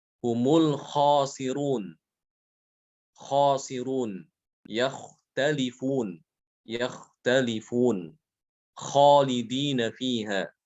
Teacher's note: kha itu keluar dari tenggorokan paling atas